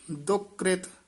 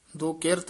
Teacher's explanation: ਦੁਕ੍ਰਿਤ ਇਕੱਠਾ ਹੀ ਪਾਠ ਬੋਲਣਾ ਦੁਕਿਰਤ ਨਹੀਂ ਬੋਲਣਾ